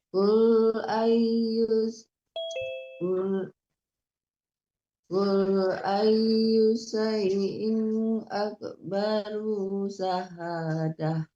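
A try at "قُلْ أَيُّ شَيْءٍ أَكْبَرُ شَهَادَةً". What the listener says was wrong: Ruhnya jangan tertahan, tidak panjang. Qul ayyu syai'in akbaru syahadah. Ruhnya juga tidak panjang, jangan ditahan. Qul ayyu syai', jangan ayyu syai', itu panjang jadinya ya, kan tidak panjang itu ada harakatnya. Akbaru syahadah, hanya panjangkan, jangan ruhnya. Ya, itu yang akan Ibu betulin ya Bu ya, ruhnya tidak boleh tertahan karena ruhnya harakatnya tidak ada panjangnya ya.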